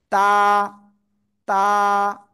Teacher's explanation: জিহ্বার আগা উপরের দুই দাঁতের গোড়ায় লাগাবেন, লাগিয়ে এই অক্ষরটা উচ্চারণ করবেন এবং সিম্পল একালিপ টেনে উচ্চারণ করবেন। তা। তা।